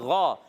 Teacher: غین کا مخرج ہے حلق کا اوپر والا حصہ